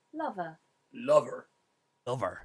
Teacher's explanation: i'm doing the schwa ending which we would normally do for an er ending but is curling into the r